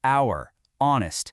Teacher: They both start with a consonant H, but you don't hear it, do you? The H is silent. The first sound you actually make is a vowel sound